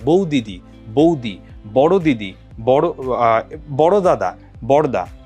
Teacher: পাশাপাশি একই উচ্চারণের দুটা ব্যঞ্জন ধ্বনি থাকলে একটা লোপ পায় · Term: ধ্বনিচ্যুতি বা ব্যঞ্জনচ্যুতি